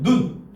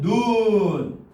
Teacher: 같은 자음과 모음으로 돼 있지만 어떻게 짧게 발음하냐 길게 발음하냐에 따라서 뜻이 달라진다는 겁니다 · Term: 장단